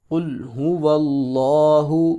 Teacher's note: لفظ اللہ کا لام، اس سے پہلے اگر زبر آ جائے یا پیش آ جائے تو اس کو ہر صورت موٹا کر کے پڑھتے ہیں، صرف لفظ اللہ کا لام۔